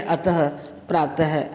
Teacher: और नंबर 3 पर है अह, इसे विसर्ग कहते हैं। विसर्ग का उच्चारण हल्के रूप में ह की तरह होता है